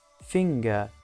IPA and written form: ˈfɪŋgə (finger)